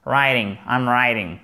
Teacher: le T, quand il est compressé entre 2 voyelles, il est déformé et il se prononce presque comme un de